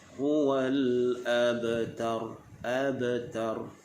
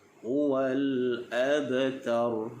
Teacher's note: maka dibacanya dengan qalqalah sughra, yakni kita lantunkan bunyi ba tidak terlalu kuat.